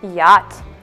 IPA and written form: jɑːt (yacht)